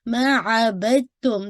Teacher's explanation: जो दाल की आवाज़ है, वो ता के अंदर मर्ज हो रही है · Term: इदगाम मुतजानिसैन